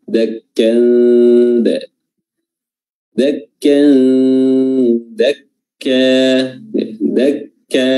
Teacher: Huruf dal sendiri itu ujung lidah bertemu dengan gigi seri atas.